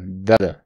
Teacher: vamos a reducirlo con una corta da y suena como una flap t